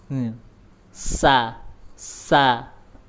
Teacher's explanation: ujung lidah ada di gigi seri bawah bagian dalam.